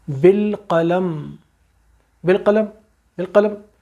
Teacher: اب پھر میم آیا، ہم نے ساکن ہے، ہم نے ایک دم ہونٹ اس کو بند کر دیے اور میم پورا پڑھا گیا